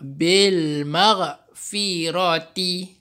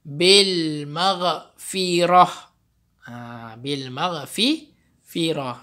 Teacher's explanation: Tapi kalau nak wakaf, nak berhenti, kita baca, kita gantikan T ni dengan huruf ha.